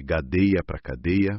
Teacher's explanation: Uma consoante surda, tipo K, T, P, vira sonora. G, D, B, por causa dos sons vizinhos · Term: sonorização